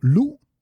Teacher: lu, with the glottal stop at the end, you already know that this means no